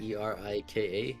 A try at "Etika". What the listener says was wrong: Etika. Erika. Not Erika. Etika with a T. Etika.